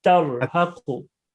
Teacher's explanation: Yeah, you're not rolling the R.